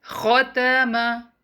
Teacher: Make sure you pronounce the letter khaa heavy and do not make letter ta heavy. Letter ta is light.